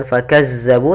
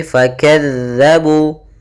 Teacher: usahakan jangan sampai dibaca dengan Zai